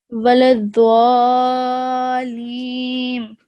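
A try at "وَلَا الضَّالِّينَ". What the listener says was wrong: Okay, so here, this is not dwa. Okay, this is da, like that. Waladallin.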